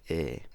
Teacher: front vowels, like eh, which in turn are pronounced closer to the front of the mouth, closer to the lips